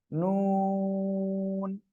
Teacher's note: Just দুই ঠোঁট সব সময় গোল থাকবে, নুন।